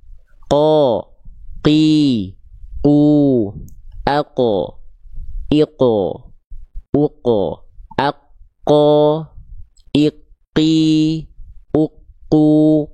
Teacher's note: huruf qof itu nempel ke langit-langit lunak saja ya. Nempel ke langit-langit lunak saja sehingga ketika dilafalkan pelafalnya begini.